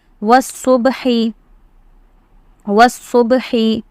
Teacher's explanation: So you will drop the Alif and directly you will join the Waw with the Sod.